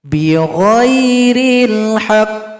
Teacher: Kalau berhenti pada qaf yang tasydid sama dengan huruf yang sebelumnya, harus diberikan bunyi qalqalah, bunyi pantulan. Tapi pantulannya di sini dia datang terlambat 2 ketukan.